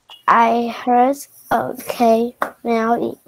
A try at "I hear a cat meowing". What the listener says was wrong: Oh, did I say heard? Hear. I hear or heard. I hear a cat meowing.